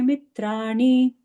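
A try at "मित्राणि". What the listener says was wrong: See, the na should be different now, Mataji. It should hit the roof. Mitrani.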